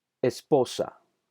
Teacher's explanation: el acento está en la sílaba de en medio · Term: acento prosódico